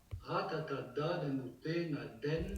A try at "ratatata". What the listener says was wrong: Attention, c'est un ta, c'est pas un da. C'est un ratatata.